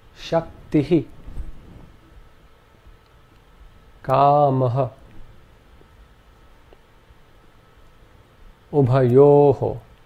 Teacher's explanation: Notice how the visarga always takes on the preceding vowel sound.